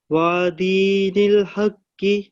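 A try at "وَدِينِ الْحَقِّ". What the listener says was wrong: واو لمبی نہیں کرنی, واو پر فتح. ایک دم ودین الحق.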